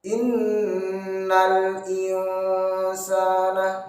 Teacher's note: ikhfa awsat, antara dengung dan samarnya seimbang